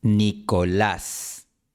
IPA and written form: ni.ko'las (Nicolás)